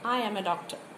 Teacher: For example, I am a doctor, oru statement aanu, avada ellam poornathayundu, the sense is complete and therefore, it is non-expectant kind of intonation.